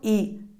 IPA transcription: iː